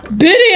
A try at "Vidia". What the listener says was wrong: It's pronounced Vidia, not Bidia.